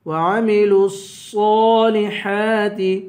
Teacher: صاد کو پر پڑھیں گے ایک الف کے برابر کھینچ کے پڑھیں گے ہا کو ایک الف کے برابر کھینچ کر پڑھیں گے وعملوا